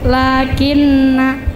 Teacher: na panjang dibaca pendek